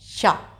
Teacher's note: तो श का उच्चारण स्थान हो गया तालु।